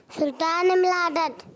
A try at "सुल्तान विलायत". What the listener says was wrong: अरे सुन तो लो, सुल्तान विलायत। विलादत नहीं, विलायत।